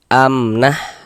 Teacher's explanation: Maka dibaca jelas, tidak berdengung. Baca pendek saja. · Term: izhar syafawi